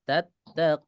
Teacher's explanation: Wawu ini nggak ikut tebel huruf sebelumnya ya.